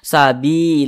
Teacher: Ada lafaz Allah, sebelumnya ada huruf yang memiliki tanda baca kasrah, maka lafaz Allahnya ini dibaca tipis, dibaca tarkik.